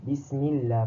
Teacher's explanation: Lam pada lafaz al-jalalah, okey, dibaca tarqiq ataupun nipis apabila sebelum kalimah Allah itu terdapat huruf yang berbaris bawah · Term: lam tarqiq